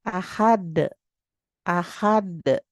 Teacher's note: Mantul secara lebih berat karena berada huruf qalqalah itu di akhir ayat. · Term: qalqalah kubro